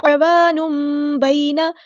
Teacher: تو یہاں پہ اقلاب ہو رہا ہے، میم کی آواز پڑھیں گے